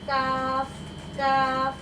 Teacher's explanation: और जो ये काफ है ये हमारा बारीक हर्फ है, तो हम बारीक आवाज़ में मुंह को हल्का फैलाकर काफ काफ ऐसे पढ़ेंगे